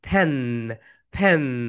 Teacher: এফ যখন pronunciation করবে উপরের দাঁত নিচের ঠোঁটের সঙ্গে টাচ করবে